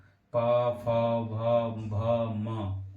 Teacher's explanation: ओठ से बोलेंगे ओठ, पा, फा, भा, भा, मा। ओठ से आवाज निकलेगी और ओठ आपस में टच होंगे।